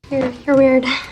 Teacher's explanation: the sentence has a flat intonation that emphasizes judgment in this insult